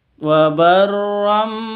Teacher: tanwin berjumpa atau bertemu dengan ba dibaca dengung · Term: iqlab